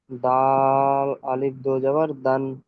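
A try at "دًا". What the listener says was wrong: দাল আলিফটা ছেড়ে দিন। দাল দো জবর দান, এই যখন তানবিনের পরে দো জবর তানবিন এইটা যখন আসবে, ঠিক আছে, আমি দেখে দিই আপনাদের, কনফিউশন বারবার হচ্ছে যেহেতু।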